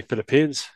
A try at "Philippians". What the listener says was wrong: Yeah, it's not pronounced Philippines, though. That's like the country. It sounds like The Philippines. Philippians.